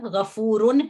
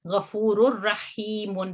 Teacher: तनवीन की एक हरकत गिर जाती है और एक हरकत पढ़ी जाती है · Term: इदगाम कामिल